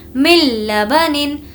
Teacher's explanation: نون ساکن کے بعد لام آیا ہے, لام آیا ہے اسی لیے بغیر غنہ کے پڑھیں گے.